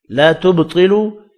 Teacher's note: با ساکن پر قلقلہ کرنا ہے, طاء پر پڑھا جائے گا.